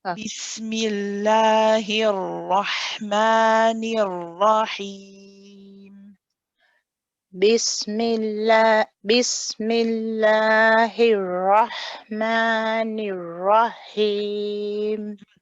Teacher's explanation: When we join the noon to the ra, now you'll notice that we do not have a join between the ra and the ha. So after the ra, you kind of make a point to stop that letter and then say the ha separately. Okay, so we don't want to join the ra and the ha.